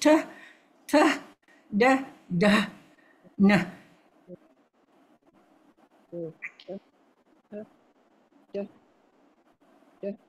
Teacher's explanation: Dental, you see, the tongue is just behind the teeth. The retroflex is a bit more behind, but it's very minor.